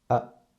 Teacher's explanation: It's a toneless tone, so it sounds like very weak and short. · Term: neutral tone